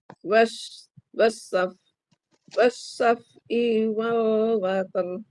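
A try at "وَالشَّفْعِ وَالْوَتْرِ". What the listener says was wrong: Tapi fa-nya rohawah sama shin-nya. Wasyaf'i. Wasyaf'i. Syaf rohawah. Ro-nya. Nah, kalau syaf'i itu fa-nya tidak rohawah. Wasyaf'i. Wasyaf'i. Tuh, jadi ngalir gitu. Kemudian terus wal wataru. Wataru. Itu si ro-nya jangan water. Itu ro-nya jadi tipis. Naik pangkal lidahna.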